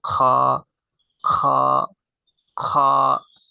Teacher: বা কফ ফেলি তার পূর্বে যে গলা খাঁকড়াই যেমন সব এই গলা খাকরানো যে স্থান থেকে হয় ঠিক সেই স্থান থেকে এই হরফটা উচ্চিত হয়